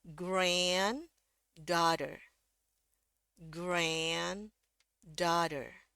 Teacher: grand ini dia yang nadanya paling tinggi. Paling naik, turun sedikit, turun sedikit.